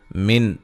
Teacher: نون ساکن کا اظہار ہے، غنہ نہیں کریں گے